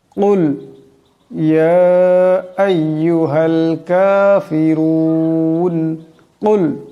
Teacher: এখানে বড় কাফ আওয়াজটা গলা থেকে আনতে হবে। কুল ইয়া, এখানে ইয়ার উপর মদ আছে, এটাকে লম্বা করে পড়তে হবে।